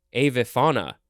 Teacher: I think the emphasis is on the fa.